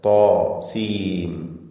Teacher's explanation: തോ എന്ന് പറയുമ്പോൾ അതിനും തഫ്ഖീം, അതിന്റെ അലിഫിനും തഫ്ഖീം നിലനിൽക്കുന്നു